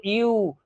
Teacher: ইউ বলতে গিয়ে দেখো ভোকাল কর্ড থেকে তো আওয়াজ আসছে, তার সাথে সাথে তোমার ঠোঁটটা দেখো সরু হয়ে যাচ্ছে একদম, তাই না। তো ইউ, তো সরু হয়ে যাচ্ছে মানে তুমি অন্য পার্টস এর হেল্প নিচ্ছ। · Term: কনসোন্যান্ট সাউন্ড